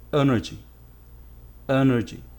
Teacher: The stress is on the first syllable. The first syllable is pronounced stronger.